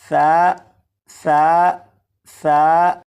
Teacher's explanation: सा को नरमी से पढ़ेंगे, यानी सीटी की आवाज़ के बग़ैर पढ़ेंगे।